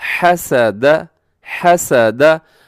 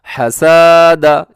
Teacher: ज़रा बराबर भी इसको लंबा न कीजिएगा, क्योंकि तीनों के ऊपर सिर्फ ज़बर वाली हरकत हैं